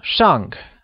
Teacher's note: carries the falling tone also known as the fourth tone